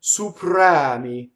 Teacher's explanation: Again, a rolled R because the R touches a consonant, and open E on the stress.